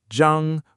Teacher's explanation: The second is first tone. Zhāng, flat and high.